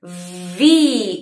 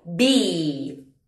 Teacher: La V vibra mientras que la B es explosiva. Juntamos los labios y decimos V.